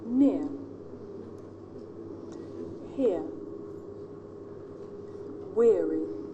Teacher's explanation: This is a diphthong, a double vowel sound. The shape of our face changes. The beginning of the sound to the end. · This diphthong, the centering diphthongs, they end with the schwa.